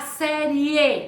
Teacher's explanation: sonoro já que parte do sou fraco para um som forte parte da semivogal para uma vogal então nós temos o exemplo do da série série é semivogal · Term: ditongo crescente